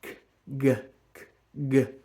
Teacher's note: the tongue tip staying behind the bottom teeth, and the back of the tongue is going up to the soft palate